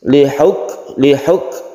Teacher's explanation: kaf ini ada sifat hames, jadi dilelehkan